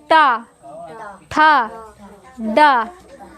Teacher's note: जब जीभ मुड़े समझ लो मुरधन्य है